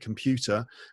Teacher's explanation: in the word computer there's an r at the end but you don't hear me say it